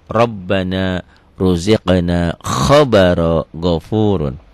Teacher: ro yang berbaris di atas itu dibaca tebel. Tebel tafkhim.